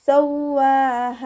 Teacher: വാവിന് ശബ്ദം വന്നിട്ടുണ്ട്, 2 ഹർഫുകൾ ഉച്ചരിക്കുന്ന കനം കൊടുക്കുക. പിന്നെ അലിഫ് സോഹിറ വന്നിട്ടുണ്ട്, 2 കൗണ്ട് നീട്ടിക്കൊടുക്കുക.